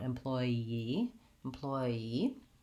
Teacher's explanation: when I have to go from A to E I end up with a little bit of a glide in there a yes sound